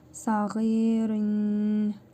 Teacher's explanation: İdğam-ı məal-qunə qaydasına görə tənvindəki nun hərfini burnumuzda tələffüz edərək bir əlif miqdarı uzadırıq və vav hərfinə şəddə verərək tələffüz edirik.